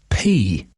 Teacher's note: can you feel the air explode from your lips